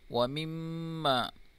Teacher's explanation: میم مشدد ہے، اس میں غنہ کریں گے